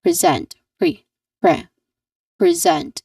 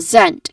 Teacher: the second syllable, which is the stressed syllable here, so we say it a bit more loud and we say it a little bit longer, we emphasize it basically, is zent.